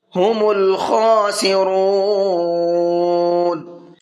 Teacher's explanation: خا کو پر کر کے بھی پڑھنا ہے اور کھینچ کر کے بھی پڑھنا ہے